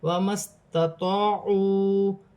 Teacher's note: الف مدہ بن رہی ہے، واو مدہ بن رہی ہے، 1 الف کی مقدار کھینچ کر پڑھا جائے گا. ہاں پر الٹی پیش ہے، اسے بھی 1 الف کی مقدار کھینچ کر پڑھا جائے گا.